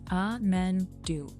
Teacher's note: Now just keep do a little longer and stronger than amen. So it becomes amen do, with that third beat taking the spotlight.